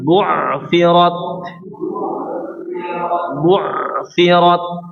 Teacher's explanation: Ditekan ke dalam sehingga ada aliran suara ya pada huruf ain sedikit atau setengah mengalir.